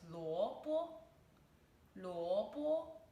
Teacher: It's the second tone and the first tone.